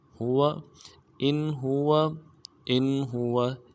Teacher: مبين. ان ہوا حمزہ کو نون ساکن کے ساتھ ملانا ہے، نون ساکن ہے یہاں پہ اظہار کریں گے آگے، اور حلقے میں سے ہا آ رہا ہے